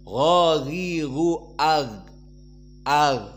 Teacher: tidak boleh ada nafas keluar di saat disukunkan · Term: jahr